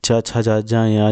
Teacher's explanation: चा छा जा जा या जो है तलव्य व्यंजन है।